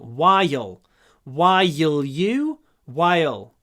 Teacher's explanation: Здесь у нас есть звук I, гласный I, заканчивается на «й», перед «л». И вот в этом случае добавляется дополнительный слог while